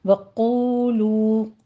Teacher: قوف کو پر پڑھیے، دونوں ہونٹوں کو گول کرنا ہے